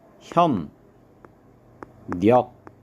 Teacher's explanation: 또 자, 협력부터 보면 협력은 비읍하고 리을하고 만났는데 비읍은 비음, 미음으로 바뀌게 되어 있죠. 그리고 리을은 니은으로 바뀝니다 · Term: 비음화